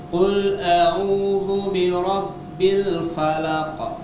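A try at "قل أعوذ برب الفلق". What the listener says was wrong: Falaq. Tebalkan ya qafnya.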